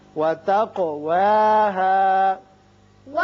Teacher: قاف چونکہ مجزوم ہے اس لیے اس کی صفت قلقلہ ادا کریں گے